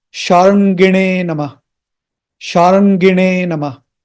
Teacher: This na is a retroflex. You have to twist your tongue.